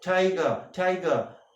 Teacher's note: You can see that front of the tongue, the front and the tip of the tongue is just going up to the roof of the palate